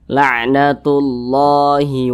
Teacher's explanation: itu huruf Syamsiyah itu ada 14 salah satunya huruf lamah maka lamnya ini dileburkan dia cara membacanya itu diidghamkan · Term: alif lam syamsiah